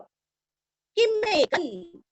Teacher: क के ऊपर अनुस्वार का उच्चारण आधा न